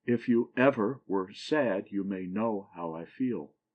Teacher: A foot that has the last syllable accent and the first two not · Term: anopest